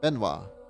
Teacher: Benoit is the French version of Benedict, pronounced something like Benoit, emphasis on the second syllable.